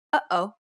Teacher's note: the second sound is actually deeper in the throat than the first so deep in fact that it causes the vocal cords to stop momentarily causing a buildup of pressure it's the sound you make in between the uh and O